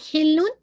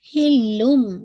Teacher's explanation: تو حلم، آپ نے یہاں پہ اگین اقلاب کا رول آ گیا. تنوین کے بعد با آ رہی ہے تو ساؤنڈ آف تنوین چینج انٹو میم ساکن میں